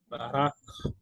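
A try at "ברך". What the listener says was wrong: Il faut bien prononcer le ch. Barach. Barach.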